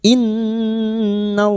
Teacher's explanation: lam jalalah yang didahului fathah kita baca tafkhim